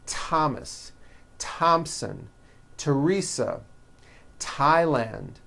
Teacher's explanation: although these next words and names are spelled with a th they are pronounced as if they were spelled with a normal T TT like that and these words are Thomas Thompson Teresa Thailand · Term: th exceptions